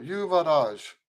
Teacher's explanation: Now I'm putting the accent on the last syllable.